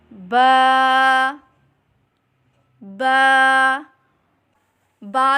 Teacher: बा दोनों होठों के तर हिस्से से अदा करें · با دونوں ہونٹوں کے تر حصے سے ادا کریں